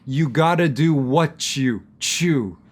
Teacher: I'm taking the second part what you the T why and I'm changing that to a CH sound